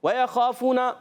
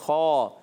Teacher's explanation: خا حرف مستعلیہ میں سے حلق کے اوپر والے حصے سے بھی ادا ہوتا ہے